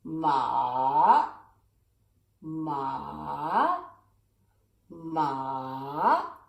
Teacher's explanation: you go down and up ma this is a third tone